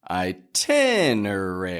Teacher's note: let's get that strong in the tin and weaker in everything else